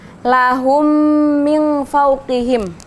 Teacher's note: jadi idgham mimi cuman mim mati bertemu dengan mim maka dia bacanya tetap ini mendengung tapi mendengungnya mingkem gitu mulutnya tertutup